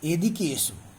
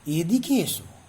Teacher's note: গলার স্বরটা কোথাও নিচ থেকে উপরে উঠছে আরোহী, কোথাও সমান্তরাল যাচ্ছে, কোথাও অবরোহী নিচের দিকে নেমে আসছে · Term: অবিভাজ্য ধ্বনি